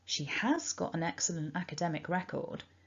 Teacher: so i would emphasize has by using the strong form